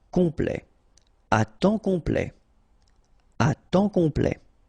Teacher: Complet. And then OM is nasal here, just because you get your P after that